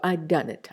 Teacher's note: the ha and the ah both the sounds are uh deleted and you get a compressed d in its place